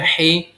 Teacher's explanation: ح یہ حلق کے درمیان والے وسط حلق سے ادا ہوگا